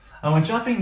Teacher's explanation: we are going to have rising intonation, which means we're not done